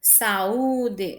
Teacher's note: Nós temos um hiato aí. Saúde, então o som do A e do U são fortes, por isso se separa e são as duas vogais